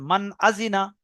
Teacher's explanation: নুন সাকিনের আওয়াজকে বিনা গুন্নায় জাহির করে তাড়াতাড়ি পড়তে হবে। একে ইজার বলে।